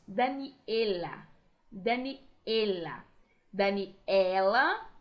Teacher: Normalmente, em espanhol, eles não abrem muito a vogal E, assim, E. Pensem comigo em alguém que se chama, aqui no Brasil, de Daniela. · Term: bem fechadinha